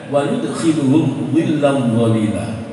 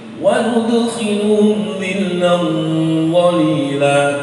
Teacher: Ini dhot dan dal. Makhrajnya sama, semua sifatnya sama, hanya beda. Yang dhot itu isti'la, yang dal itu istifal.